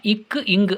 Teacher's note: இக்கு, இங்கு ஆகிய 2 மெய்களும் நாவின் முதற்பகுதி அன்னத்தின் அடிப்பகுதியை பொருந்துவதால் பிறக்கின்றன.